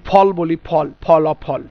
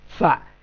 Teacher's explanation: তো ফ আমরা উচ্চারণ করি দুই ঠোঁটে, আসলে দুই ঠোঁটে না হয়ে এটা আরবিটা হবে উপরের দাঁত নিচের ঠোঁট